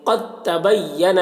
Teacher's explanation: دال میں جزم ہے اور تا میں تشدید ہے تو دال کو نہیں پڑھیں گے. قد تبینا اس طرح پڑھیں گے، دال کو نہیں پڑھا جائے گا.